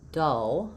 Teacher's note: I really stop the air and then it bursts out. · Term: true D